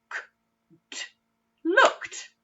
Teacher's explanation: It's the d at the end. It makes the t sound instead. It doesn't make the ed sound.